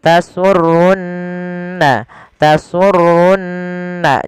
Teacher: Pada lafal di sini ada nun berharokat tasydid, maka ia kita baca dengan bacaan gunnah, ditahan suara nunnya. Tasurrunna, tasurrunna, jangan langsung tasurrun nadhirin, tapi tahan dulu.